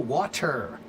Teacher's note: I'm going to cut the T in half. So now when you say the T, the first part of the T is not that strong because we cut it off. It's still a T, but we just cut the first part of the tea off. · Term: flap T